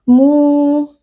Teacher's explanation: Mu juga mad tabi'i karena ada waw sukun yang sebelumnya berharakat dhammah, dibaca panjang 2 harakat.